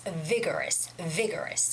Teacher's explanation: there's a stress on the first syllable which is vi